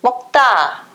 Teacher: Tá vai ser a sílaba mais forte, a sílaba tônica.